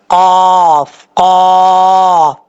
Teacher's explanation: قاف کا مخرج ہے، زبان کی جڑ اوپر والے تالو کے نرم حصے سے لگے تو قاف پڑھا جاتا ہے